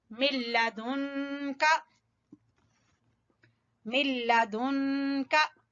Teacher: नून साकिन के बाद काफ, यहाँ होगा इख्फा